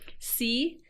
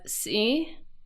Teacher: see with just modal voice means dirty whereas see with creaky voice means holiday